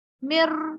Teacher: نون نہیں ظاہر ہو رہا اور را ظاہر ہو رہا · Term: ادغام